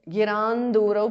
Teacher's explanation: Giran Durau because of Sandhi. Anuswara changes to Nu.